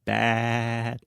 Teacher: my mouth is very open to the front